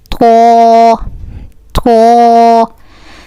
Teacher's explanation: This Tho with the tip of the tongue touching the gums of the upper to front teeth